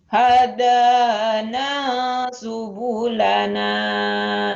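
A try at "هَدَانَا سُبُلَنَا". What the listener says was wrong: Jangan ditahan dulu. Jangan dipanjangin, segera. Ayo, jadi beatnya kenceng ini ya, cepet. Hada tekan dina. Da. Hadana tekan dina. Hadana subulana.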